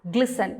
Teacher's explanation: You don't read it as glisten. The T is silent there, so read it as glisten.